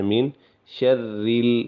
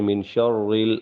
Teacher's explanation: را کے نیچے زیر ہے لہذا اس کو باریک پڑھیں گے، بجائے یہ کہ اس کو یوں پڑھیں من شرریل۔